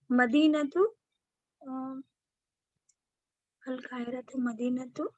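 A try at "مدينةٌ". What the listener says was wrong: मदीनतुन होगा, तनवीन आएगा। मदीनतुन जमीलतुन।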